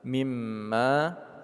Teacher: Huruf ba berharakat tanwin temun dengan mim idgham bi gunnah. Mimma, mim bertasydid kita gunnahkan atau kita dengungkan. Ma panjang 2 harakat.